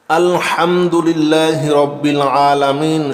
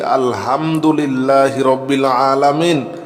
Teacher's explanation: হা অবশ্যই গলার ভিতর থেকে বলতে হবে